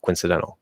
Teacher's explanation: In faster speech, you can sort of reduce that O to pretty much nothing and say like coincidental. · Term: dropping the O